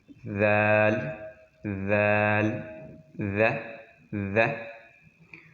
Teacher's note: ذال میں بھی بس زبان کو دانتوں کے نیچے لے کے آئے، اوپر والے جو سامنے دانت ہیں اس کے نیچے لے کے آئے. ذال، ذال، ذ، ذ.